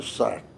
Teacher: o índio não saberia falar salto Então sai o salto então é o l retroflexo